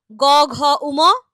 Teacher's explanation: এদের উচ্চারণে স্বরতন্ত্রের ঘোষণ বা অনুরন হচ্ছে ফলে এদের উচ্চারণে গাম্ভীর্য আসে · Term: ঘোষ ধ্বনি